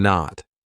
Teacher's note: My tongue is still up there, but I just didn't release it. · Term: held t